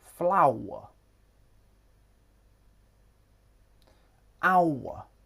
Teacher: Hour. Starts with the ow diphthong and ends in the schwa. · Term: triphthongs